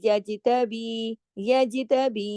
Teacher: جیم پہ کلکلا ہوگا. جیم کو ہلا کے پڑھیں گے